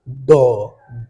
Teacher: जैसे कहेंगे डो ढ, लेकिन इसको पढ़िए डो ढ। तो जीभ जा रहा है, तालू में टकरा रहा है और तेजी से नीचे आ रहा है। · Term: उत्क्षिप्त व्यंजन